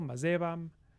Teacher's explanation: Apocopy takes out the last vowel, mazevam. Then we lose quality distinctions in unstressed syllables, so from mazevam to mazevam.